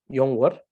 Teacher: please understand that the sound is more of a round r sound.